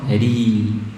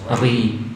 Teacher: Nah ini bukan isti'la, bukan itbaq, maka kasroh tipis.